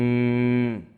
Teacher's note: গুন্না হয়েছে ওয়াজিব গুন্না, হরকতের বামে মিমে তাজদিদ।